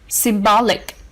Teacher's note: symbolic has stress on the second syllable